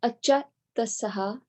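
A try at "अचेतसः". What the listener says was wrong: So this is E. So then it becomes like a. They, as in they, right? As in they did it, right? So achetasaha. Achetasaha.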